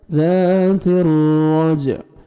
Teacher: جیم پہ قلقلہ کریں گے، ڈبل ساؤنڈ آئے گا